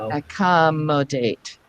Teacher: Eventually, we can say, you know what, the ac and the com are actually prefixes. We rarely ever stress the prefixes. So let's stress the first syllable after that. So that would be the mo.